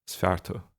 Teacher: in Munster, it's reasonably common to use tu without lenition